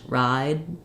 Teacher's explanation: I'm not saying my D it's unreleased ride the D doesn't come out but I'm holding this vowel longer so when there's a voiced sound like a d we hold